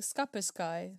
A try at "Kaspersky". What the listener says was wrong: Well, it starts with a K, so you're definitely wrong. It's Kaspersky or Kaspersky. There's multiple S's in there. Kaspersky. Or Kaspersky. It's spelt with a Y, so it's probably Kaspersky, but I think that sounds stupid, so I say Kaspersky, because I like the way that sounds.